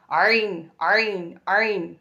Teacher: தொண்டையுடைய இந்த நடுப்பகுதியிலிருந்து வரக்கூடிய ஒரு எழுத்து